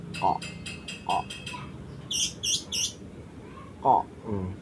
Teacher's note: Huruf ko ini memiliki makhrajnya ini terletak pada pangkal lidah dan langit-langit